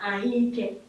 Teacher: this vowel that is at the beginning of the second word has assimilated the vowel that is at the end of the first word. E wee kpọpụta ya dịka ahụike.